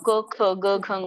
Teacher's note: ಅದಕ್ಕೆ ಕಂಠ್ಯ ವರ್ಣ ಅಂತ ಕರೀತಾರೆ ಕಂಠದಿಂದ ಬರುತ್ತೆ · ಕಂಠದಿಂದ ಬರುತ್ತೆ ಕ ವರ್ಗ, ಕ ಖ ಗ ಘ ಅಂತ ಹೇಳಿ.